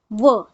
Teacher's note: व सिर्फ याद रखना है हमें दंत ओष्ठ दांत और ओठों का इस्तेमाल होता है